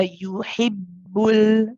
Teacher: the ba is another shidda letter. It's one where the sound stops. Okay, so here again you'll notice that the sound doesn't run. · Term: shidda quality